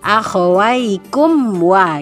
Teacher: bacaannya adalah izhar syafawi, dibaca jelas begitu. Maka tidak boleh lama-lama, harus langsung akhawaikum wa.